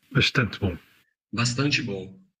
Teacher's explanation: In European Portuguese, it's sh before a voiceless consonant, even if it's in the following word, and before a pause. In other words, at the end of a word if there's nothing right after it.